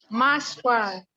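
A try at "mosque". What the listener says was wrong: Enggak, bukan maskwa. Cuman gini aja, mas. Udah tutup. Iya, tulisan memang seperti ini, bacanya mas. Mas, tutup.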